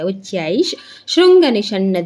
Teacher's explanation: ಚೈ ಮುಂದೆ ವಿಸರ್ಗ ಇದೆ ವಿಸರ್ಗ ಮುಂದೆ ಶ ಇ ಇದೆ ಅವಾಗ ಏನಾಗುತ್ತೆ ವಿಸರ್ಗ ಆಟೋಮ್ಯಾಟಿಕ್ ಆಗಿ ನಮಗೆ ಅರ್ಧಶ ಆಗುತ್ತೆ